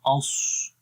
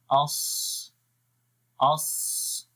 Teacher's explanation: آواز تو موٹی ہوگی لیکن ہونٹوں کو گول نہیں کریں گے۔ یہ ایک کامن مسٹیک ہے جو لوگ اکثر کر دیتے ہیں، غور نہیں کرتے۔